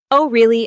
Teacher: Notice how your voice rises slightly at the end. That rising tone shows interest.